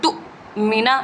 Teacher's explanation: یہاں پہ حمزہ ہے، حمزہ ساکنہ ہے، یعنی حمزہ کے اوپر جب کوئی جب ضم آ جاتی ہے تو وہ ساکن ہو جاتا ہے، حمزہ ساکنہ ہے، اس لیے یہاں پر حمزہ کو جھٹکا دے کر پڑھیں گے، یعنی تو مینا یوں جھٹکا دیں گے، تو اس طرح سے ہم جھٹکا دے کر ادا کریں گے۔